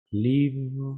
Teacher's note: Cuando termino, toco mi garganta, live, ¿hay vibración? Hay vibración.